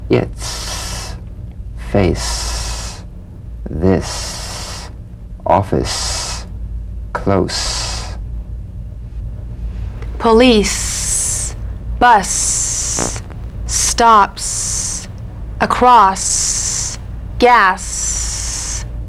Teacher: the S is like the Z except it's unvoiced so it's the same tongue placement as the Z the Z the S is like a gentle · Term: unvoiced s sound